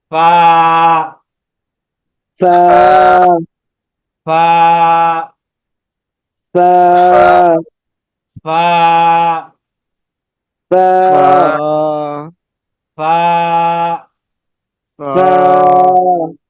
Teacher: উপরের দাঁতটা নিচের ঠোঁটের প্যাটের সাথে লাগবে, একালিপ টান। উপরের যে দাঁতটা আছে যেটা, এই দাঁতগুলো নিচের ঠোঁটের প্যাটের সাথে হবে, একালিপ টান।